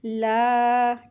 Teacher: اکثر لوگ نا کیا مسٹیک کرتے ہیں، اس کو لا پڑھتے ہیں، لا، جیسے لام زبر لا نہیں، تو یہاں پہ الف مد لگی ہوتی ہے اس کے ساتھ، اس کو 2 حرکات کھینچ کے پڑھیں گے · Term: لام الف